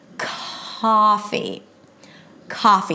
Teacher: the C Sound at the beginning of words before a vowel since it's a stop sound that is voiceless is aspirated so it feels like there is a little H after